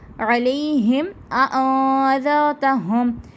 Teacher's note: میم تشدید کے بعد حمزہ ہے، اظہار شفوی کا قاعدہ، تو کوئی غنہ نہیں ہوگا، واضح کر کے پڑھا جائے گا